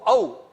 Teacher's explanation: એટલે બે સ્થાનનો ઉપયોગ થયેલો એ અને અહીંમાં, અને ઉ ઔ કંઠનો પણ ઉપયોગ છે, અને હોઠનો, હોઠ આપણે ચીમડાઈ જાય છે ઉ ઔ બોલીએ ત્યારે, એટલે અહીંયા પણ કંઠ અને ઓષ્ઠ બંનેનો ઉપયોગ સ્થાનમાં થયેલો છે